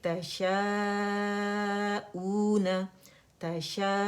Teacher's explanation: तशा के बाद अगर देखें ये एक ही लफ्ज़ है, उसके अंदर हर्फ मद्दा आ रहा है, हर्फ मद्दा के फ़ौरन बाद हमारे पास हमज़ा आ रहा है, तो मद्द मुत्तसिल वाजिब बन रही है, तो हमने 5 काउंट्स इसे स्ट्रेच करना है। · मद लेटर हमज़ा की आवाज़ को खींच रहा है, तो मद बदल है